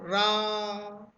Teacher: प्रकंपित मतलब कंपन, बोला रा, मुख में कंपन होगा, रा। ठीक है, तो घुमड़ कर वायु निकलेगी, देखो रा।